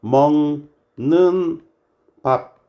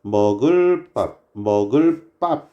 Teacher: 띄어쓰기 없이 바로 붙여서 우리는 발음을 하기 때문에 뒤에 놈이 된 소리로 바뀌는 거예요